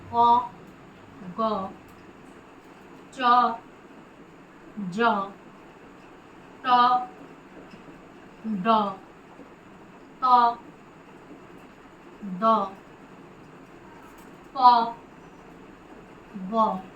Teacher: এদের উচ্চারণে শ্বাসবায়ুর জোর অপেক্ষাকৃত কম দিতে হয়। তাই বর্গের প্রথম ও তৃতীয় বর্ণ যেমন ক, গ, চ, জ, ট, ড, ত, দ, প, ব এই বর্ণগুলিকে আমরা বলি অল্প প্রাণ বর্ণ।